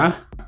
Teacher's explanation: the alveolar ridge, because it is an alveolar sound or a voiced alveolar central approximant, is approached by the tongue tip, and air flows down the middle of the tongue. If you want to flow air down the middle of your tongue, you have to raise the sides of your tongue.